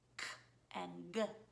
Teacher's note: K's and G's are made in the back of the throat, K and G. When children substitute for these two particular sounds, they always make the sound in the front.